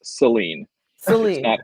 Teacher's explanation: In Michigan, it's pronounced with a schwa.